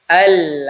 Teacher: Ini temannya di tenggorokan pertengahan. Dia satu rumah dengan huruf ha.